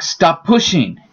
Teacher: you only say the consonant once and the space disappears. An example of this is stop pushing.